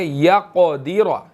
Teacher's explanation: قاف جو ہے وہ موٹا بھی ہے اور یہاں پر جو ہے وہ ساکن بھی ہے، اس کو ہم نے قلقلہ یہاں پر کرنا ہے، ٹھیک ہے، ہلا کر پڑھیں گے یا قدیرہ، ٹھیک ہے جی.